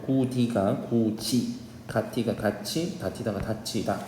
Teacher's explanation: 구개음화는 이 계열 모음 앞에 디귿 티귿이 구개음 지읒 치읒으로 변화하는 현상입니다.